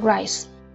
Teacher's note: khi mình phát âm âm I nó sẽ bị ngắn lại để chuẩn bị cho cái âm sẽ xuất hiện tiếp theo đó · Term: bị rút ngắn